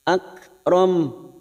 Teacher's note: Huruf kaf sukun memiliki sifat hamas sehingga bunyinya akram.